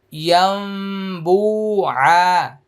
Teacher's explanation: এটা ইকলাব গুন্না, এখানে নুন সাকিনের পরে বা আসছে, এই জন্য মিম দিয়ে পড়তে হবে।